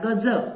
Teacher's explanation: आणि दुसरा जो शब्द आहे गज, यामधला जो ज हा वर्ण आहे त्याचं उच्चारण स्थान आहे दंतमूल. गज असं म्हणताना आपली जी जीभ आहे ती दंतमूल म्हणजे आपल्या दातांचं जे मूळ आहे आपल्या मुखामध्ये त्याच्या जवळपास स्पर्श करते